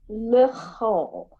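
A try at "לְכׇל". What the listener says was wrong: Perfect. Good.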